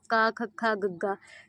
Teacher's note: ਜਿਨਾਂ ਧੁਨੀਆਂ ਦੇ ਉਚਾਰਨ ਸਮੇਂ ਜੀਭ ਦਾ ਪਿਛਲਾ ਹਿੱਸਾ ਕੋਮਲ ਤਾਲੂ ਨੂੰ ਛੂਏ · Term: ਕੰਠੀ ਧੁਨੀਆਂ